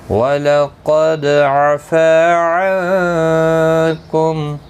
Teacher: نون ساکن کے بعد حروف اخفا کا کاف اخفا حقیقی ہوگا